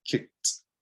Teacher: it should end in a soft t just a soft sound um and you shouldn't be adding another syllable